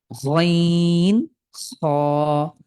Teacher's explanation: এরপরে গইন খ এটা সহজ আমাদের সিলেটি ভাইদের জন্য খ বাংলার খ আর গইন কণ্ঠের একদম শেষ ভাগ থেকে গইন খ। ঠিক গড়গড়ানি যে ভাব আছে আমরা সকালে উঠে কুলকুল কুলু যখন কুলকুচি করি ঠিক ওই রকমই